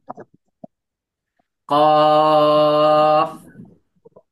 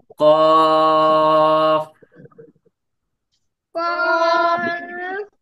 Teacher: তো এই লাস্টে যখন আমরা কফ এরকম করব, শেষের দিকে আমাদের নিচের ঠোঁটের পেটের সাথে সামনের উপরে দুই দাঁতের আগা লাগাতে হবে এবং হালকা করে বাতাস বাহির করতে হবে। কফ, বলেন সবাই।